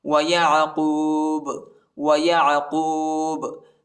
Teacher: ادھر ہم وقف کرتے ہیں اور با کو جھٹکے کے ساتھ پڑھیں گے، قلقلہ کریں گے.